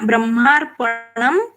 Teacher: आगे ब है इसलिए अनुस्वार का उच्चारण म जैसे आया